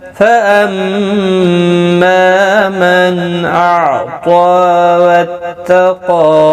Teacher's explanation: نون ساکن کے بعد حمزہ اظہار حلقی ہوگا، گنہ نہیں کریں گے · فاما میم مشدد پر غنہ ہوگا، الف مدہ بھی ہے، ایک الف کی مقدار کے برابر کھینچ کر پڑھیں گے.